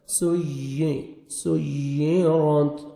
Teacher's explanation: یا شد ہے، سختی سے ملائیں گے اور یا کا ساؤنڈ آئے گا۔ سُيِّرَتْ، را موٹا، تا کا لائٹ سے ساؤنڈ، ہلکا سا ساؤنڈ آئے گا تا کا۔ · سین کو سیٹی کے ساتھ پڑھیں گے، اور یا شد ہے، سختی سے ملائیں گے اور یا کا ساؤنڈ آئے گا۔